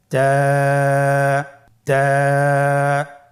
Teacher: জিহ্বার আগা সামনের উপরের 2 দাঁতের গোড়ার সঙ্গে লাগিয়ে উচ্চারিত হয়।